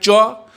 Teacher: ध्यान दीजिए, आप पहले बोल लीजिए चो, और देखिए आपका जीव कहाँ जा रहा है, कहाँ जा रहा है, चो। ये चो बोलते हैं तो जीव आपका ऊपर तालु में सट रहा है ना, चो। तो बिना तालु में सटाई चो बोलिए तो ओ बोला जाएगा, नहीं।